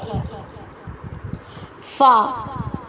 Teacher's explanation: فا جو ہے ثنایا اولیہ کا سرا اور نیچے ہونٹوں کا اندرونی حصہ. ثنایا اولیہ کہتے ہیں اوپر والے دانتوں کو.